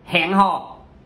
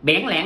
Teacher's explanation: thanh huyền, thanh ngã, thanh nặng, đó là những âm trầm. Khi nói nó sẽ chìm xuống.